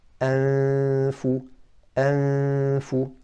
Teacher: Well, what's being hidden is the noon, because you're not pronouncing the noon clearly. You're not saying an, so you're hiding it. But what's remaining of the noon is a ghunnah from the nasal cavity.